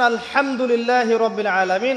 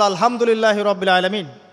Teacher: হা এর মাখরাজ কোথায় বলেন একজন কণ্ঠনালীর মাঝখান থেকে এখান থেকে আপনি উচ্চারণ করছেন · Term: হায়ে হুত্তির